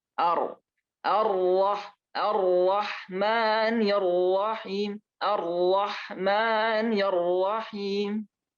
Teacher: sifatnya dia takrir, ada punya getaran, yang mana getaran tidak banyak juga tidak sedikit, tidak hilang. Lalu kemudian dia juga berharokat yang tafkhim, jadi harus tebal. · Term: huruf ra